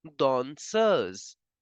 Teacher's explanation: whenever s is between two vowels we have to change the sound of s to zed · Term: z sound